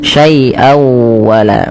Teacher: an nafsin sin sya dikembalikan kepada makhrajnya tadi sin sya ya sin syaian wala pada syaian wala sama ketika bertemu dengan huruf nun tadi nun ketemu nun nah di sini tanwin ketemu dengan wau cara membacanya masukkan suara tanwinnya pada lafal syaian kepada huruf wau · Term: idgham